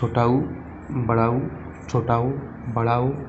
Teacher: स्वरों के उच्चारण में होठ गोलाकार बनते हैं। वे स्वर जिनका उच्चारण करते समय जो होठ हैं गोलाकार बनते हैं उन्हें वृत्तीय स्वर कहा जाता है।